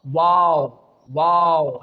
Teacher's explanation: there is no connection between our lips, but only the rounding of our lips can pronounce the letter waw